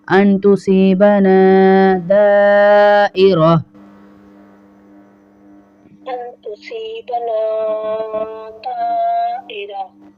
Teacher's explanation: ان کے بعد جو تصیبنا ہے نا کے ساتھ الف مدہ ہے، اس کو کھینچیں گے۔